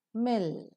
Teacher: the soft palate is lowered to open the nasal passage of air the air that is coming from the lungs escapes through the nose